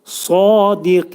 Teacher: Sad hərfini demək, tələffüz edərkən dil kökündən yuxarı qaldırılır və qalın sad eli.